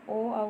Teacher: कंठ और ओष्ठ से बोली जाती हैं। इसमें ओ औ आता है और ओ आता है। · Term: कंटोष्ठ